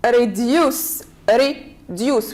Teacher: we have two syllables so we stress on the second one reduce like be use two syllables we stress on the second